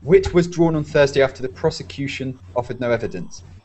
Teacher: you start high and then with this subordinate clause you go lower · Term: intonation